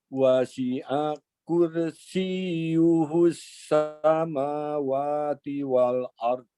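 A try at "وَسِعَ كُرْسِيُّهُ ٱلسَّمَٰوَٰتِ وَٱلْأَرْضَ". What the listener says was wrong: Oke, roknya pada kata kursi tebalkan. Wasi'a kursi. Kursi. Oke, tebalkan.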